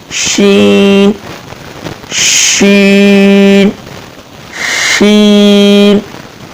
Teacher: جیم کا مخرج آپ کو یاد ہے, جیسے جیم ادا ہوتا ہے وہیں سے شین ادا ہوتا ہے, یعنی زبان کا درمیانہ حصہ اوپر تالو سے لگانے سے یہ شین ادا ہوگا